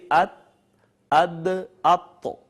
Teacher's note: ان کا مخرج ہے نوک زبان اور ثنایا علیہ کی جڑیں